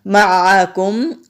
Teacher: معکم، عین حروف ہلکی ہے، حلق سے نکالیں گے۔ میم ساکن ہے تو یہاں بھی ہم اظہار شفوی کریں گے، یعنی کہ میم کی آواز کو کلیئر پڑھیں گے۔